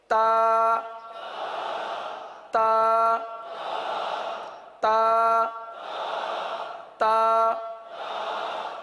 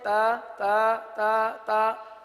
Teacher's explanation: تو تا کے اندر سختی ہے، شدت ہے. تو اس کو شدت کے ساتھ ادا کریں گے. تا تا تا تا، یعنی ہلکی سی چپکتی ہوئی.